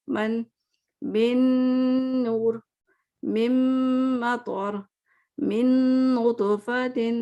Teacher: غنے کے ساتھ، یعنی کہ آپ کو آوازیں آئیں گی نوز سے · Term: با غنہ